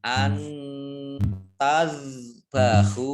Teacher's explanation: nun sukun bertemu dengan huruf ta bacaan ikhfa dibaca samar-samar. Antazbahu zalnya ini tidak kolkolah ya.